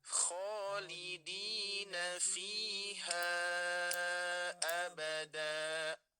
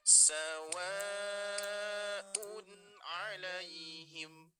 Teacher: Saya praktekkan, kita praktekkan di huruf H-nya dengan 3 ketukan.